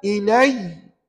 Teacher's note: Tak ada panjang ya. Jangan ilai 2 harakat pula. Tidak ya. Dia baca dengan pendek aja.